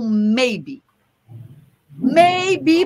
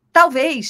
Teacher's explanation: maybe tem duas bilabiais a bilabial do m e do B